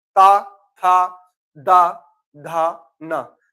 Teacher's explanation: जितने शब्द बोलेंगे आपके दांत से टकराएगी जीवा, दांतों से टकराएगी जीवा।